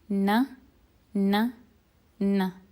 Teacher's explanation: Noon is pronounced by placing the tip of the tongue on the upper gum, and the sound also passes through the nose, just like the N sound in English.